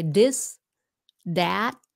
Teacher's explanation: a lot of Vietnamese turn the th sound into a D sound right they say this that right duh right duh it's very